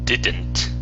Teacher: So when you're pronouncing the word didn't, you're using a Spanish D saying didn't. Okay, so when we pronounce the D in English, our tongue does not touch our teeth. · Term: D sound